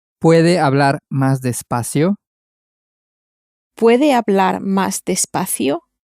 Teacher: Using a rising intonation, turn it into a question and say, can you speak more slowly?